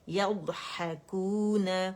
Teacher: ضاد جو ہے اس کی آواز چلے گی، اور اس میں ہم شدہ بھی پیدا نہیں کریں گے، قلقلہ بھی نہیں پیدا کریں گے، کیونکہ قلقلے کا لیٹر نہیں ہے. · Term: استطالت